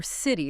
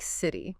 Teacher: When a T sound comes between two vowel sounds, it often softens. It sounds less like a sharp t and more like a soft d or even sometimes a quick r sound. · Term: flap T